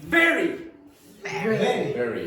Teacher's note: The V sound is produced with the top teeth and the bottom lip. Not the top lip.